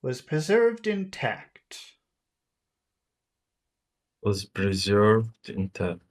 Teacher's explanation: we have to put some high tones at the end but of course we have to finish with a low tone